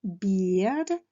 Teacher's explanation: Attention donc à la prononciation des lettres E, A. C'est un I long